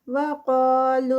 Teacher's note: قا پہ جو ہے وہ قاف ہیوی اور 2 کاؤنٹس کا اسٹریچ